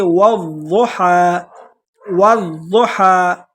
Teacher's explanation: یہ ضاد ہے، اس کو موٹا کر کے پڑھیں گے اور واضح کر کے پڑھیں گے تاکہ اس میں ہمارے الفاظ میں ضاد کی جگہ دال نہ نکلے۔